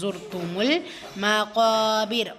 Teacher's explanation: அதற்கான உச்சரிப்பு கொடுக்கணும் கூடவே அலிஃப் மத்தா இரண்டு ஹரக்கத் அளவு நீட்டம் கொடுக்கணும் வசனத்துடைய முடிவுல ரா சுக்குூன் பெற்று அதற்கு முந்தைய எழுத்துல கெஸ்ரா பெற்று வந்திருக்கிறதுனால அந்த ரா சுக்குனை மெல்லினமா ஓதணும் · லாம் சுகூன் இருக்கு கமரியா சோ சேர்த்து ஓதுங்க ஜுர்த்துமுல் மகாபிர் காப் வந்து வலின எழுத்து அதற்கான உச்சரிப்பு கொடுக்கணும் கூடவே அலிஃப்